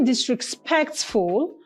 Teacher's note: only disrespectful has its stress on the third syllable